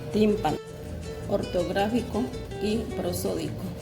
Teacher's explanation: Palabras esdrújulas. El acento se ubica en la antepenúltima sílaba. Todas ellas llevan tilde.